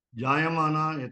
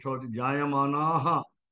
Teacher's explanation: the Visarga is missing because of conjunction